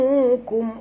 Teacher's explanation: Ra ini mati tuan-puan. Huruf sebelumnya baris atas kena baca tebal. Yaw, bukan yar.